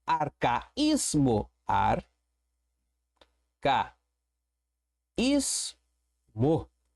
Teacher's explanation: Eu tenho uma paroxítona porque eu tenho a penúltima sílaba como sílaba forte, sílaba tônica.